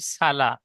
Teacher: সিন সাধারণভাবে পড়তে হবে, মুখ গোল হবে না।